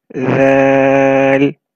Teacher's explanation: It comes from the same makhraj as tha. The tip of your tongue will touch the edges of the top two front teeth. And it will be read very softly. Thal. So the tip of your tongue will be seen between your teeth.